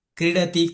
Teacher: ક ત્યાંને ત્યાં કંઠમાં રહ્યો અને વિસર્ગ નીચે એટલે કે જીભની મૂળમાં જતો રહ્યો અને બની ગયો જીહવામૂલ્ય અને કેવી રીતે બોલીશું હવે બાલક જેવો ક પાછળ બોલીશું ક્રીડતી